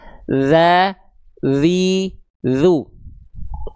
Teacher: ujung lidah kita cukup disentuhkan tipis-tipis ke ujung gigi seri atas kita. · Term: huruf dzal